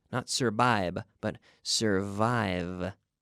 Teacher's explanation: remember the V we have to treat it like a vocalized or voiced F